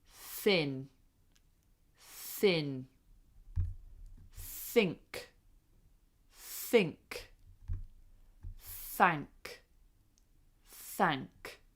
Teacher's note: Bite your tongue lightly like that. And an unvoiced th is just like whispering. No voice. So we go like a whisper. · See if you can hear the whisper at the beginning. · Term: unvoiced th's